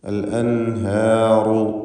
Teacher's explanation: റാഇന് തഫ്ഖീമുണ്ട്. അൽ അൻഹാറു, റു എന്ന് തടിപ്പിച്ച് റാ ഉച്ചരിക്കുക.